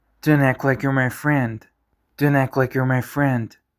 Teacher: the T sound at the end of don't gets dropped. Why? Because whenever a T comes after an N, it's often silent, especially in casual speech.